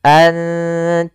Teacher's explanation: Enggak karena dia ikhfa itu menyamarkan huruf kepada huruf setelahnya yaitu nunnya disamarkan kepada huruf ta